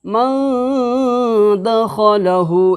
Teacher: نون ساکن کی آواز کو ناک کے بانسا کے اندر میں ایک الف کے برابر گننا کے ساتھ چھپا کر کے ادا کریں گے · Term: اخفاء حقیقی